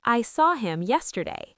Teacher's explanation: Let's talk about H dropping. In fast speech, him or her often loses the H. You say, I saw him yesterday.